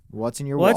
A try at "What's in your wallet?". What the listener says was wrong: What's in your wallet? You say it too fast.